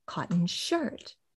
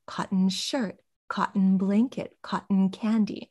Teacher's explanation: when that first element is the material that the thing is made of, we don't stress it. So cotton, although it's a noun, it's the material that things are made of.